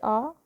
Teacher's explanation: 11 में से आ बोलने पर सबसे अधिक मुंह खुलता है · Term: विवृत